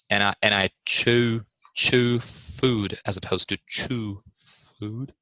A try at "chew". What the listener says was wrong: Much better.